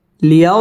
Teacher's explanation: জবরের বাম পাশে জজম লিনের হরফ তাড়াতাড়ি পড়তে হবে